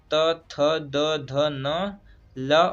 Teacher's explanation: दंत वर्ण कौन कौन से हैं, इसे याद करने के लिए एक प्रसिद्ध सूत्र है लितूल सानाम दंता, अर्थात लृ तू अर्थात त वर्ग त थ द ध न ल और छोटा स का उच्चारण स्थान दंत से होता है